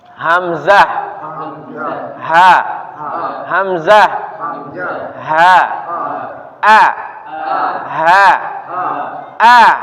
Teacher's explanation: huruf huruf apa yang keluar dari pangkal tenggorokan itu Hamzah ha